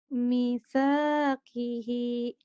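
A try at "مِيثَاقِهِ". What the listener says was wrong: panjang. Misakihi gitu. Misakihi.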